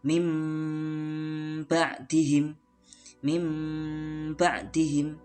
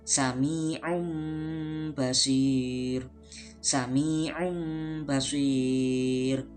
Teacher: merubah suara nun sukun menjadi suara mim sukun dan disertai dengan dengung. Jadi suara tanwin atau nun mati dirubah menjadi mim mati ketika bertemu dengan huruf ba atau huruf iqlab.